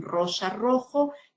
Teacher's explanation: Que puede ser una R fuerte, como en rosa, rojo, pero entre vocales es una R suave, ¿no? Lo que los lingüistas llamamos trill y flap, ¿no?